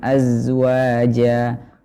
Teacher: Jadi yang mengalir adalah suara, akan tetapi nafas sedikit yang mengalir, tidak sebanyak sin. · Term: huruf zai